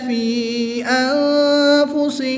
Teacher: یا مدہ کے بعد حمزہ دوسرے کلمے میں ہے تو یہاں پر مد منفصل ہوگی، 2 سے 3 الف تک کھینچ کر پڑھیں گے